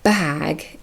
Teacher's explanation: vowel length that changes before a voiced or unvoiced consonant is important for example the ah in bag is longer